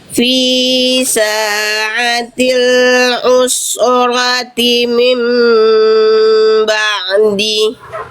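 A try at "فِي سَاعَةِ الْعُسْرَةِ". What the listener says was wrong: Oke, sin sukunya jangan mantul. Use. Roti.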